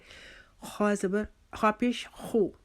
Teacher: یہ حروف مستعلیہ میں سے ہے، اس کو پر کر کے یعنی کہ موٹا کر کے پڑھا جاتا ہے۔ موٹا ہم ہونٹ گول کر کے نہیں کریں گے بلکہ اپنی زبان کا پچھلا حصہ جو ہے وہ تالو کے ساتھ لگائیں گے، تھوڑا سا تالو کی طرف اٹھے گا تو ہمارا حروف مستعلیہ یعنی موٹے جو حروف ہیں پڑھنے والے وہ ادا ہوں گے۔